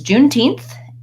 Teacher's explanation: you can see how my tongue is already sticking between my teeth for the th sound as I do then